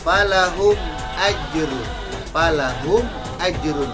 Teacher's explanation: Mimnya dibaca izhar syafawi karena bertemu dengan huruf alif.